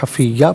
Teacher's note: حفیین وقف کی صورت میں حفیہ پڑھیں گے، 2 زبر کی تنوین وقف میں الف سے چینج ہو جاتی ہے